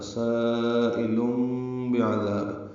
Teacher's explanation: تنوین کے بعد با آنے کی وجہ سے لم میں اقلاب ہو رہا ہے، سائل بعذاب، یہ اس لیے چھوٹی میم لکھ دی گئی ہے۔ اب تنوین کا جو نون ہے وہ نہیں پڑھیں گے، اس کی جگہ میم پڑھیں گے۔ بعذاب، عین وسط حلق سے ادا کریں گے، ذال کو نرمی سے پڑھیں گے، ذال مدہ ہے، 2 حرکات لمبا ہے۔ · الف مدہ کے بعد حمزہ یا کی شکل میں، لیکن ایک ہی کلمے میں ہونے کی وجہ سے مد متصل ہے، ہم اس کو 4 حرکات سے زیادہ لمبا کرتے ہیں، 5 حرکات یا 6 حرکات۔